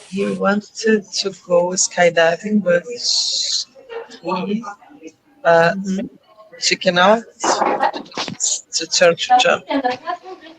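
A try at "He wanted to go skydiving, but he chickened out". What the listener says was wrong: Just make sure you pronounce the end. Chickened. Not chickened. So the only time we use the id sound is when the verb ends with a T or a D.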